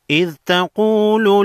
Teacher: قاف ساکن کو ہے، قاف کو موٹا پڑھیں گے، حروف مستعلیہ میں سے ہے۔